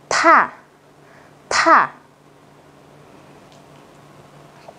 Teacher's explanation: các bạn đọc gần giống chữ thờ nhưng bật hơi hơn. Cô ghép với A sẽ đọc là tha, tha.